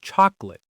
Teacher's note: Many native speakers say chocolate, dropping that middle vowel sound.